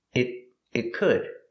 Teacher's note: The T in it is a stop T. Stop the air. It could. Link it to the next word.